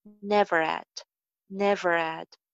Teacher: Had ko jab iske saath link karenge, to H sound jo hai wo skip ho jayegi.